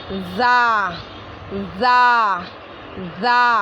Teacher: हम दांत को बंद करेंगे ऊपर नीचे के और पीछे से ज़बान लगा के बोलेंगे